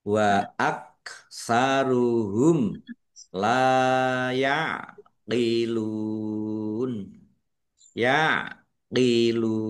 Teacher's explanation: Mim sukun bertemu dengan huruf lam, bacaan idhar safawi, dibaca jelas.